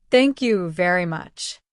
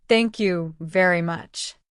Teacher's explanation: Did you hear the rising tone at the end? That makes it sound friendly.